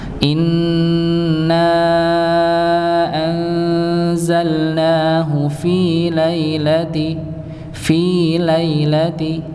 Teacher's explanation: Nah kalau Fi dipanjangkan dua harakat Nggih kalau lailati maka dipendekkan satu harakat saja karena beda beda hukum Nggih kalau Fi itu kan ee kasrah